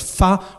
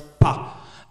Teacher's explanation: So depending on the dialect, it can be either pronounced F as fa or as pa.